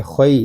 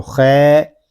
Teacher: خا کو ہم پر پڑھیں گے، یہاں یا لین ہو رہا ہے ، اس کو پڑھیں گے خی، اس کو خے یا خی